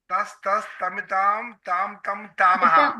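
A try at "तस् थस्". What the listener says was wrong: మితాం కాదు, తస్ థస్. ఆగండి, ఇది తస్ ఫస్ట్ది మహాప్రాణం కాదు, అల్ప ప్రాణం. సెకండ్ది థస్ థ.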